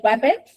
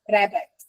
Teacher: This is where a child will substitute one sound with a different sound. For example, a W instead of a R. So, they will say, "Wabbit." instead of rabbit. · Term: substitution